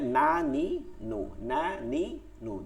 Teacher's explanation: জিব্বার আগাটা এই তালুতে লাগে, এটা এমনিতেই লাগে